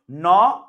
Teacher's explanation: ন কারণ আপনি যখন ন উচ্চারণ করতে যান আপনার জিহ্বা সামনের তালুতে থাকে অর্থাৎ দাঁতের মাড়িতে সামনের দাঁতের যে মাড়িটা আছে সেখানে স্পর্শ করে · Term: দন্ত